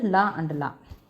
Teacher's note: மூச்சு காற்றை வாயறையில் ஒரு இடத்தை அடைத்து நாக்கின் 2 பக்கத்திலும் வெளிவந்ததால் பிறக்கும் எழுத்து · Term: மருங்கொலி